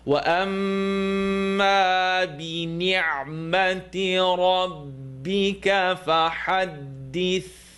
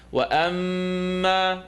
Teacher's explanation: Mim and Noon Shadda are going to make a full nasal sound. To exaggerate the sound, sometimes I press my lips together.